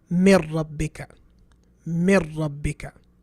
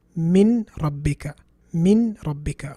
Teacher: But when you say mir rabbika, you haven't pronounced the noon. The person listening to you, if he doesn't know Arabic, he wouldn't know there's a noon there that has been omitted. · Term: idgham